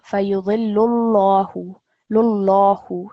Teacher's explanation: because it is preceded by the dhamma stroke, it's going to be a thick lam